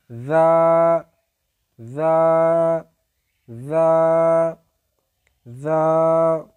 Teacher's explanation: এরপরে রয়েছে জ। জিহ্বার আগা উপরের দুই দাঁতের আগার সঙ্গে লাগিয়ে উচ্চারিত হয়